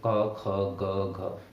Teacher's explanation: क ख ग घ, सारे कंठ से उच्चारित हो रहे हैं